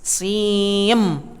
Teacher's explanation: tidak bunyi n tetapi bunyinya m SIM langsung ke bibir ya baru kemudian tahan 2 harokat baru kemudian sebut huruf mim-nya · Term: idgham